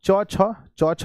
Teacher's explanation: च छ च छ है तो बच्चों तालु से होगा तालु